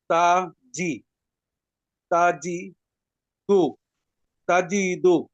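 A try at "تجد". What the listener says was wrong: জিতে টান নাই, তাজি দু।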